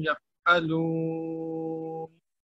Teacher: یہ فا جو ہے یہ حروف ہمس میں سے ہے، ہمس ہو جائے گا جی، فا کا ہمس کریں گے